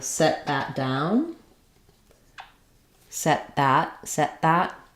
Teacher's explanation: I'm going to use an unreleased t uh and go right into the consonant sound or if there's a vowel set it um sit it set